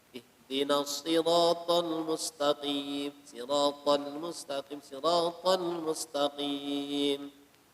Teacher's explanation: Jadi makhraj ha ini di ujung tenggorokan, bukan di dada